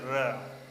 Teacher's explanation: जब र का उच्चारण करते हैं तो यहाँ पर क्या होती है कि उच्चारण करने में कंपन उत्पन्न होती है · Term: प्रकंपित व्यंजन